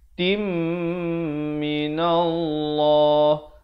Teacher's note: Lafz jalalah dibaca tebal dan dengan dua harakat pada lam yang kedua. · Asalnya ni'matin, ta tanwin di bawah bunyi tin, tapi bila datang mim jadi hukumnya idgham bi gunnah, masuk beserta dengung dua harakat.